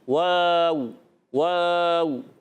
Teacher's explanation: ادا ہوتا ہے ہونٹوں کی گولائی سے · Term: عربی کا واو